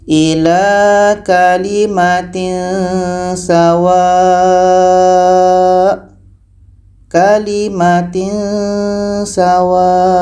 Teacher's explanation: bunyi samar saja maksud bunyi samar itu mendekati tempat keluar hurufnya pastikan ujung lidah kita ini menempel ke gigi seri bawah jadi nanti akan menghasilkan bunyi samar